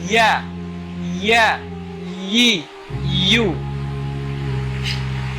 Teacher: Makhrajnya adalah pertengahan lidah tadi bertemu dengan apa? Bertemu dengan langit atas-atas. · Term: Huruf ya